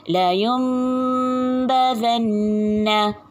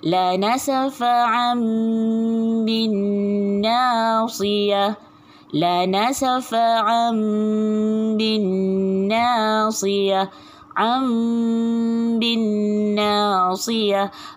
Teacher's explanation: Okey, biar bibir awak tu bersentuhan lah. Dua bibir awak tu bersentuhan untuk bunyikan dengung pada huruf mim ni.